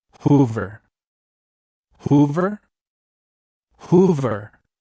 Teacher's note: make sure to stress the first syllable and keep the verse short and crisp Hoover Hoover if you